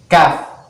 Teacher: Tapi huruf kaf ini dia termasuk huruf hamas, ya. Agak dikeluarin angin